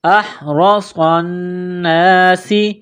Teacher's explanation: سین میں سیٹی کی آواز پیدا کرنی ہے، سین کو باریک کرنا ہے